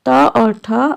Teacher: इनमें त और ठ अघोष है। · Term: अघोष व्यंजन